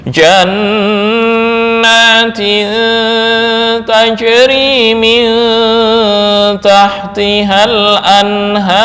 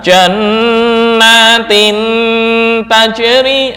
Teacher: ikhfa lebih mendominasi daripada ghunah